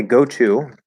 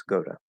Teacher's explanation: Like if I say go to, okay, it's very common to say go to. So we reduce to ta, and then the voice of O changes the T into a flat D.